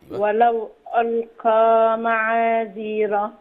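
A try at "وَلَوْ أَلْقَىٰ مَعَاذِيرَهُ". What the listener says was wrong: معاذيره ابين الحرف الاخير الهاء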